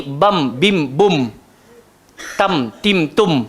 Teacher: So dia nak ganti nun kepada bunyi mim. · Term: iqlab